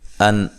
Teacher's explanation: یہاں نون ساکن کا اظہار ہے، غنہ نہیں کریں گے